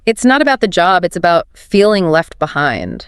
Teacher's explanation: Pay special attention to the natural emphasis on the words job and behind.